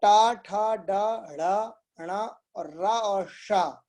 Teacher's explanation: टा, ठा, ड, ढ़, ण और रा और शा, इनका प्रोनाउंसिएशन जो उत्पत्ति स्थान है वो है मूर्धा। मूर्धा किसको बोलते हैं, हमारे मुंह की जो छत है, ऊपर का हिस्सा और ऊपर।